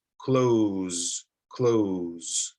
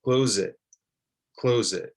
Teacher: You can hear it's a Z, Z, the strong, not the soft S. It's a Z. So let's connect the Z sound to the I.